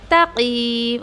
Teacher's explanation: अक्सर यहाँ पर क्या मिस्टेक होती है पता है आपको, क़ाफ़ को हैवी पढ़ना है, देन बेचारा ता भी हैवी हो जाता है, तक़ीम, कोई ऐसा पढ़ता है, तो तक़ीम ऐसा नहीं करना आपको, तक़ीम। ओके, ता हैवी नहीं करना है आपको, क़ाफ़ को हैवी पढ़ना है